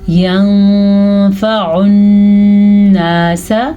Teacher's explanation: नून साकिन के बाद फ़ा हरूफ़े इख़्फ़ा में से आ गया है तो हम नून साकिन को छुपा के पढ़ेंगे